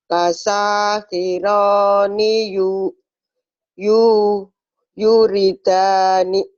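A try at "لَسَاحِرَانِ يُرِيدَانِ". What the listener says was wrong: Belum. Sanya panjang. Rohnya panjang. Danya panjang. Lasakhirani yuridani. Lasakhirani yuridani.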